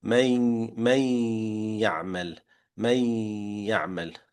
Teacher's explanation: 50% of the sound is coming from the mouth, which is the ya, the other 50% from the nose.